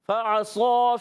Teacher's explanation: صاد کو ہی موٹا رکھنا ہے، اس کے بعد جو الف آ رہا ہے وہ بھی موٹا ہو جائے گا، اور ایک الف کھینچنا بھی ہے.